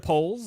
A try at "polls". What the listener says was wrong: Stop saying polls. I wish we could somehow because you say polls like it's POLE, not POLL. Somehow when you say it, it's just dirty. The emphasis on the wrong syllable.